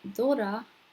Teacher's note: the R in that word is in the middle of your mouth and it's like you're saying a D.